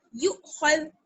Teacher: Next یا حمزہ پیش یو یا حمزہ پیش یو خا دال زبر خذ یو خذ یو خذ یو خذ. خا کو موٹا پڑھیں گے دال کو باریک پڑھیں گے